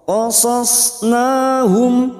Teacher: Qad qasas, qad qasas, qasas huruf sad, qasasnahum, na alif kecil di atas atau fathah berdiri, mat tabi'i 2 harokat kita panjangkan. Nahum, mim sukun bertemu ain.